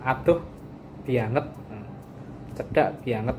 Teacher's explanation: Jadi kalau di Solo itu sering menggunakan penekanan dengan kata banget, tapi pengucapannya itu bianget.